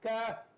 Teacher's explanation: Kaf kena kenyah juga. Tapi dia kena keluar angin sebab eja ada kaf alif fa kan.